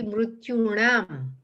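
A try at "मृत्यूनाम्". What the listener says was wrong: Yeah, so it's so this is mrityunam. It's actually the vowel r. It's not consonant ra. So it's actually just regular nakara, dento nakara, not more than. So because it's, so if it's ra or sha, then na becomes nakara, dento na becomes murdanya nakara. But here we have a vowel r, so not the consonant ra.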